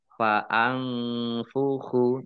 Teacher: Nun sukun bertemu dengan huruf fa. Bacaan ikhfa dibaca samar-samar.